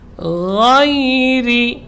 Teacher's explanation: huruf gha, huruf rakhawah dan jahar keluar dari ujung tenggorokan. Gha mengalir dia, bukan ga, ya, dan tidak boleh bergetar. Dia yang mengalir hanya suara.